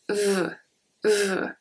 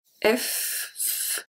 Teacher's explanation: It's very close to the pronunciation of F. So the difference between the V and the F is that the V is more of a vibrating sound, when the F is more of a smooth sound.